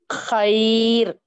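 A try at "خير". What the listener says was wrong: आप खैर बोल रहे हैं, खैर बोले तो खा बारीक हो जा रहा, खा को मोटा पढ़ना है। खैर, बोलिए। खैर, खा को थोड़ा मोटा पढ़ना है। हुरूफ मुस्तालिया हमेशा मोटे पढ़े जाते हैं। खा, साद, वाद, ता, वा, गैन, कफ, ये हुरूफ मोटे पढ़े जाने वाले हैं। अब इसमें खा है, खा को मोटा पढ़ेंगे। खैर,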